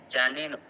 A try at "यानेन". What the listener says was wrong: यानेन, जा नहीं, या होता है, यानेन।